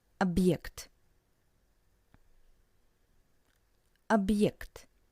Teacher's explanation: Heart sign represents a very short pause. For example, in the word объект, which means object, and you can hear this little pause between ob and ekt.